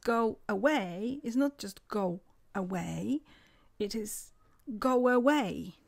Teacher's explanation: So there is a W sound after go. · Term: Intrusion